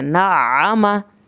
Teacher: اچھا اب عین کی شد جب نا آپ کریں گے عین کو حلق سے ہی نکالنا ہے, عین کی شد پہ دباؤ ڈالنا ہے, پھر آگے آما اس کو بعد میں ادا کرنا ہے نا آما.